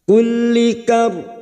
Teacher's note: Wa min kulli kar, lam yang bertasdid hanya masuk tanpa ditahan lama-lama. Kulli kar, rok sukun yang didahului fathah, roknya kita baca tafkim.